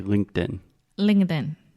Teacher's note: when we say it a little bit faster that t gets a little bit softer and faster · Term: stop t, stop T